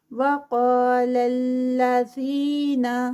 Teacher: قا heavy, قاف اور ساتھ میں 2 کاؤنٹس کا الف مد کا اسٹریچ